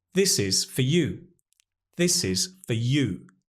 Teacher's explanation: We're stressing the you, so that's strong, but the for is unstressed, so we use the weak form. Again, the lovely schwa is here. F, f, f. This is for you.